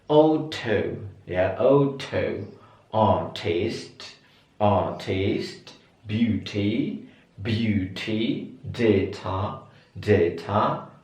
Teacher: kalau teman-teman pengen British, ini semua T di sini tetap dibaca T